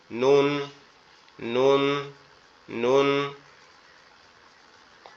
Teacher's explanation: নুনটা উচ্চারণ হবে আমাদের জিহ্বার আগা উপরের তালুর সঙ্গে লাগবে, জিহ্বার আগা উপরের তালুর সঙ্গে লাগবে, লেগে উচ্চারিত হবে নুন, নুন, নুন।